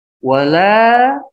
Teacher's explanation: Wala ini dibaca panjang 5 ketukan.